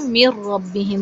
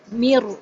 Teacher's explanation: میر، دیکھیں میم کو کمپلیٹ اور را سے جوائن کریں گے، کمپلیٹ ڈراپ ہو گیا، نہ تو غنے کی ساؤنڈ سنائی دی اور نہ ہی نون کی ساؤنڈ سنائی دی